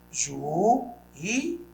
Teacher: Veja que as duas vogais ficam em sílabas diferentes na separação. E a sílaba tônica é o I. Olha, os juízes, esse hiato I e U, que é tônico, quando está sozinho ou acompanhado de S, ele recebe acento. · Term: hiato tônico